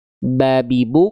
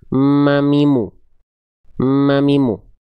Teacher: Cuman kalau huruf ba dia nggak ada dengung ya. Babibu, kalau huruf mim ada dengung masuk ke hidung juga suaranya, sengau.